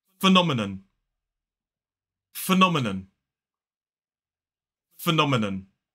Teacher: 4 syllables, the stress falls on the second. So it's the second stressed syllable is o, Then we have a short I vowel sound, and then it ends in a schwa and a phenomenon.